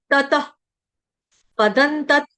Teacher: तत के आगे जो विसर्ग है उसका उच्चारण हलंत फ की तरह लगना चाहिए।